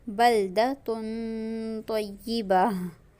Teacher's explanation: तनवीन की आवाज को नाक में छुपाया जाएगा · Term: इफा